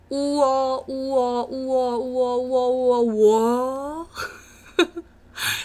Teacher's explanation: 2 vowels, oo and ah, are combined, and it made a new sound. It made a new vowel. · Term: Wa vowel